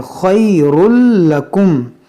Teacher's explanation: یہاں تنوین کے بعد لام ہے, تو یہاں پر ہم ادغام کریں گے بغیر گنہ کے, یہ خا موٹا کریں گے خَيْرٌ لَكُمْ.